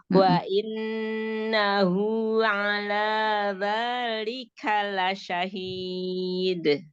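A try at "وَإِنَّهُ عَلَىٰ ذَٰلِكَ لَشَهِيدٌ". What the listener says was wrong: Jadi dalnya jangan masuk ke matnya ya, jangan masuk ke matnya. Jadi seperti ada tasydid. Nah, maka Bunda ingat-ingat, jangan asal tahu nun tasydid akmal paling sempurna, tapi tadi buru-buru nun tasydidnya hanya masuk aja ya. Sempurnakan gunahnya ya, karena memang punya tingkatan gunah.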